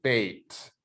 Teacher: So it's a diphthong. And the thing at the end of that diphthong is a high front vowel. So it's like the E, this I vowel. · So your mouth starts out a little bit open and your jaw raises, your tongue goes up. So it's a diphthong. And the thing at the end of that diphthong is a high front vowel.